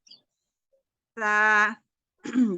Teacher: Jadi ujung lidah agak seperti kegigit, ujung lidahnya menempel di ujung gigi dari atas gitu.